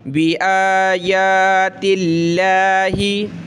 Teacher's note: لفظ اللہ سے پہلے زیر تا پہ تو لفظ اللہ کو پتلا کریں گے، تِاللَّهِ نہیں پڑھیں گے بلکہ بِآيَاتِ اللَّهِ.